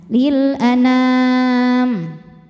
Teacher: Nam saat berhenti hukumnya mad arid li sukun karena mad tabi'i bertemu dengan huruf yang disukunkan karena waqaf. Mad tabi'inya alif didahului fathah, huruf yang disukunkannya mim, maka nunnya panjang, boleh 2 atau 4 atau 6 harokat asal konsisten dalam 1 kali dudukan ya.